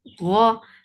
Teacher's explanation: Ghain is heavy for fatha open jaws. The sound is short.